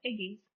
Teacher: it keeps that hard g, is a borrowing, as we know, from Old Norse, which shows no palatalization